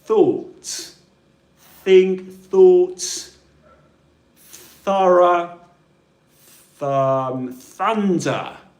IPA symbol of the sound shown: θ